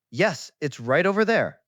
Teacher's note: I stressed there to point you in the direction.